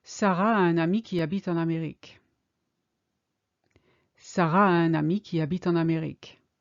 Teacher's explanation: you've got the a of Sarah, which blends in with the a of a un ami.